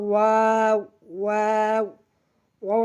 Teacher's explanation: ওয়াও, ওয়াও, ওয়াও আমরা দুই ঠোঁট হইতে উচ্চারণ করব